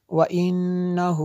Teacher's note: نون مشدد ہے اس لیے غنہ کیا